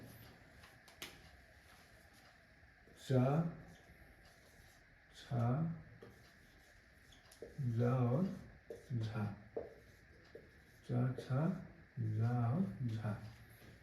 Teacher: इनके उच्चारण में जिह्वा तालु को स्पर्श करती है, और कंठ मार्ग जो है आपका वो संकीर्ण हो जाता है। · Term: स्पर्श संघर्षी